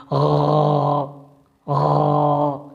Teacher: اس طرح غرارے کی آواز آپ نکالتے ہیں۔ جس جگہ سے آپ غرارے کی آواز نکال رہے ہیں وہیں سے غین کی ادائیگی ہوتی ہے